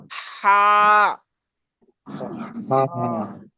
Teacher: একদম গলার ভেতর থেকে আওয়াজটা চাপা আওয়াজে বের হবে। · এটা হবে গলার মাঝখান থেকে, একদম চাপা আওয়াজে, চিকন আওয়াজে।